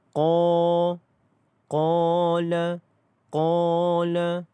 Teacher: Qala dibaca dengan panjangnya adalah 2 harakat. Okey. Kerana mad asli huruf alif, maka qa itu dipanjangkan menjadi 2 harakat.